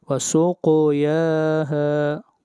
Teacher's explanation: کو موٹا پڑھا جائے گا، اس سے پہلے فتحہ ہے، وسقیاہا، قاف کو موٹا پڑھیں گے اور قاف کے اوپر قلقلہ ہوگا ، یا کو کھینچ کر پڑھیں گے اور ہا کو بھی